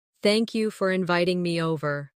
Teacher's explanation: Notice how inviting me over flows as one smooth phrase.